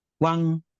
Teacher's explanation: Second tone is a check going up